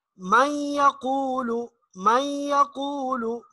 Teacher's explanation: میم کو یا کے ساتھ ملائیں گے تو یہ ایک آپس میں ادغام ہو جائے گا، اور ایک آواز ناک میں بھی چلی جائے گی، تو یہ اس انداز میں غنہ کریں گے.